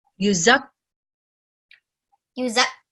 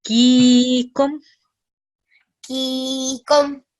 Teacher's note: we're producing 2 kaf sounds because it has letter shadda